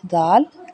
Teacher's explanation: دال کو باریک نرمی سے ادا کیا جائے گا